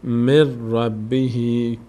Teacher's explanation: این یای کوچک بعد از کسره تبدیل میکنه این کسره رو به ای